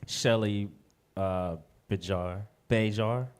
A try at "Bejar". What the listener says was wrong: Bayar. Yeah, the J is silent.